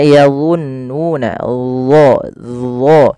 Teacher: Kemudian pada lafal yadhunnuna di sini huruf dha ya makhrajnya sama dengan huruf zal tapi ketebalannya berbeda karena huruf dha ini ada 2 sifat yang paling harus yang melekat padanya. Yang pertama sifat isti'la yaitu pangkal lidah kita terangkat, yang kedua yaitu sifat idbaqnya, lidah itu lebih melekat ke langit atas.